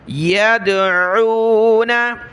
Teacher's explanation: दाल पर क़लक़ला होगा